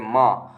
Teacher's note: म बोल के म नाक से आवाज आ र है तो म नासिक हो जाएगा